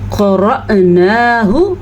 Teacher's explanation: را زبر حمزہ ساکن، را کو پر پڑھنا ہے، نون کھڑی زبر نا کو لمبا کر کے پڑھنا ہے، اور ہا کے تلفظ کا خاص خیال رکھنا ہے۔